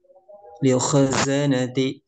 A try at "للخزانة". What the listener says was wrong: Barusan khoknya kurang tebal, za nun za na-nya tidak sempurna itmamnya ya. Li khazanati zanati zanati gitu.